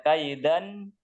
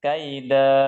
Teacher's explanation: tanwin dan kita berhenti maka tanwinnya kita ganti dengan bacaan panjang jadi yang tadinya dibaca kaidan menjadi kaida Nah jadi ya Iya